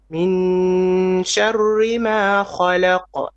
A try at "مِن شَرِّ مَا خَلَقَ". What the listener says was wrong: Again here, try to make your ra more flat. شر ri. خلق. خلق.